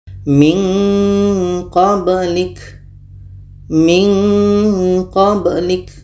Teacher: kenapa ada bunyi nga di situ karena makhraj Q ini jauh dari makhraj Nun tadi